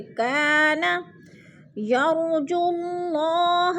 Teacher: جیسے لما کان، کا پہ الف مدہ، الف خالی سے پہلے کاف کے اوپر زبر ہے تو الف مدہ ہو رہا ہے۔ الف مدہ کو 1 الف 2 حرکات کے برابر لمبا کر کے پڑھنا ہے